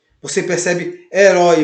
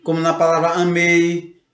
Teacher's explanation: A primeira vogal ela é dita mais forte e a segunda vogal ela é mais discreta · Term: ditongo decrescente